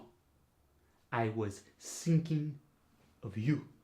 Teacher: for the voiceless th it's turned into an S